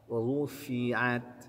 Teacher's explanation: Kaifa rufi'at, wa-nya tebal, fa-nya tipis, ainnya tipis, ta-nya tipis.